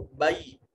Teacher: یا ساکن ما قبل مفتوح یا لین، بے نہیں کریں گے، اس کو بئی کر کے پڑھیں گے